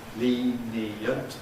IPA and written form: ˈliːniənt (lenient)